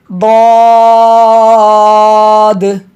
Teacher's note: दाद ये हर्फ हाफिया है, ज़बान की करवट और ऊपर की दाढ़ों की जड़ से अदा होता है